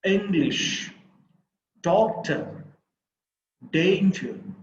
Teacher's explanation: so in all these words the first syllable is stressed